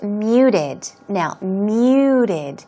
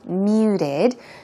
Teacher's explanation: The T is not very strong. It sounds more of a r sound.